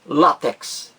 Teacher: a sílaba mais forte aí a primeira látex e aí deveria haver no no texto o acento agudo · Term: palavra paroxítona